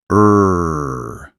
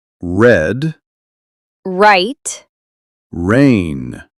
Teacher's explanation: It feels like your tongue is curling back, but very gently. · In English, the R is pulled back slightly. The tongue doesn't touch the top of your mouth. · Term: R sound